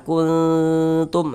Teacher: jadi di bagian kunnya itu kita tahan, kita panjangkan sejenak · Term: ikhfa